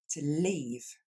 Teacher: le verbe partir qui s'écrit lui L-E-A-V-E, qui va se prononcer comme un i long.